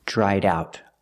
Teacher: I link the sounds with a fast D in the middle